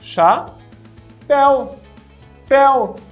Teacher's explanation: Ditongo, então eu tenho ali duas vogais, só que uma acaba sendo mais fraca, eu chamo de semivogal, na mesma sílaba. Eu tenho duas ali na mesma sílaba, eu chamo de ditongo.